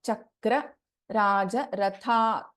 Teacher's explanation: Tha is a Mahaprana in Ratha.